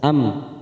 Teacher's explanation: mim sukun idhar safawi, kita baca jelas